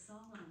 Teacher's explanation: The word solemn is pronounced as solemn with the stress on the first syllable.